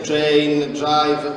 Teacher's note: abbiamo la particolarità di pronunciare il nesso TR o DR con un suono quasi gutturale